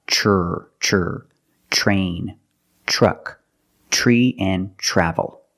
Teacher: use the CH plus the r the voiced R sound